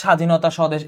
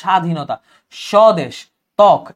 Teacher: যেমন যে স্বাধীনতা, স্বদেশ, এই দেখো তুমি কিন্তু বটা উচ্চারণ করছো, তুমি শুধু শটা উচ্চারণ করছো। স্বাধীনতা, স্বদেশ, ত্বক, এই ব উচ্চারণ হইতেছে না। সো যদি শব্দের শুরুতে থাকে তাহলে হচ্ছে উচ্চারণ হবে না, কিন্তু পদের মধ্যে বা শেষে থাকলে তখন সেটা দিতে হবে দুইবার। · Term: বফলা